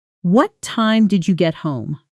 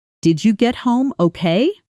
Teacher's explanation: most information questions, the ones starting with what, where, why, how, tend to fall in pitch at the end, while yes or no questions tend to rise in pitch at the end